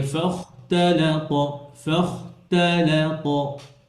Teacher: খ মোটা, তা পাতলা, লাম পাতলা, ত আবার মোটা।